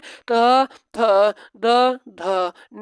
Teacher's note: त वर्ग को कहा जाता है दंत जो दांतों की मदद से बोला जाता है